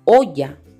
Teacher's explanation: La mayor fuerza de voz está en la sílaba o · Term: sílaba tónica